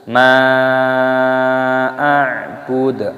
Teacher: Abiduna ma a'bud, ma a'bud, mad jaiz munfasil dan ainnya dibaca sukun, dibaca a'bud, dalnya ini dimatikan. Jadi jangan dibaca ma'a'budu tapi ma'a'bud.